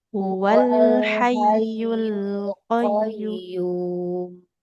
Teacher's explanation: Huwal lam ininya dialirkan dulu.